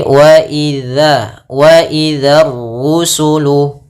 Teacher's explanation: Hati-hati pada lafal dal jangan dibaca dengan zai